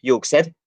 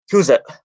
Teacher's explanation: A feature that the Southern Estonian dialects have is the glottal stop.